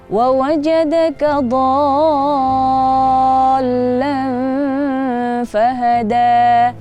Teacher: Do-nya itu di situ adalah mad lazim, jadi bacanya harus panjang.